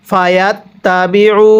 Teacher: এরপরে ফা জবর ফা, ইয়াতা জবর ইয়াত, ফায়াত, তা জবর তা, ফায়াত তা, বাজের বি, আইন ওয়াও পেশ উ, ফায়াত তাবিউ, এক আলিফ টান দিব, পেশের পরে ওয়াও সাকিন এক আলিফ টানতে হয়